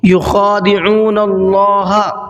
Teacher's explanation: یخادعون اللہ، اللہ کے نام سے پہلے نون کے اوپر زبر ہے تو اللہ کے نام کو تھوڑا سا منہ بھر کے پڑھنا ہے، باریک نہیں پڑھنا ہے